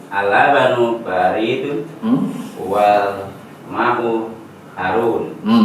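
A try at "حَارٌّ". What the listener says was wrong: Kan harun. Hanya panjangan ada alifnya. Harun.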